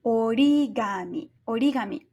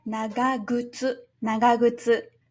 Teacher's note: The first consonant of the latter part of the word changes from voiceless to voiced